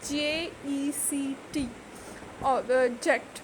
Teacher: the stress is on the second syllable, that is JECT